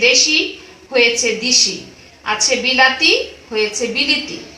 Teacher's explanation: অন্তঃস্বরের কারণে আদ্যস্বর পরিবর্তিত হলে পরাগত স্বরসঙ্গতি হয়। এবার হবে যে অন্তঃস্বরের কারণে আদ্যস্বর পরিবর্তন হবে, অর্থাৎ শেষ স্বরের কারণে আগের স্বর পরিবর্তন হবে।